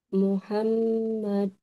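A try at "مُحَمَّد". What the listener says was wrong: Dipanjangkan lagi. Sedikit lagi panjangnya. Muhammad.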